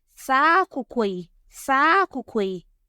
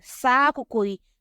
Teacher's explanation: the first syllable of the noun, which is the akoko, the tone on the first syllable loses its low tone. Then after that, the high tone of the final syllable of the pre-referential modifier spreads its high tone onto the first syllable of the noun, which has lost its low tone. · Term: tonal spread